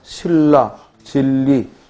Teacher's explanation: 비음, 니은이 유음, 리을로 바뀌면 유음화라고 했지. 즉, 니은이 앞이나 뒤에 오는 리을의 영향을 받아 리을로 동화되는 현상이다. 이걸 우리는 유음화 또는 자음 동화.